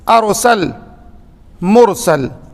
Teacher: را ساکن سے پہلے زبر ہو یا را ساکن سے پہلے پیش ہو تو یہاں پہ را کو موٹا پڑھا جائے گا